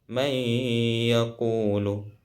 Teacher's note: Ada juga idgham bi gunnah, yang mana idgham bi gunnah di sini adalah nun sukun atau tanwin bertemu salah satu huruf yang 4, yakni ya, nun, mim, waw. Yang mana cara bacanya di sini memasukkan bunyi nun pada huruf setelahnya dan didengungkan.